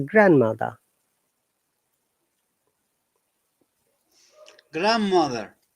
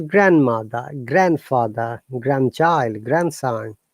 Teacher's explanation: any word that has got grand and another word we do not pronounce letter d